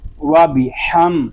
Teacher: حا میم زبر حم، وابی حم۔ یہاں میم ساکن میں اظہار شفوی ہو رہا ہے، یہاں غنہ نہیں کریں گے